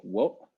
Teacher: this double omega produces a glottal stop, so it's like wota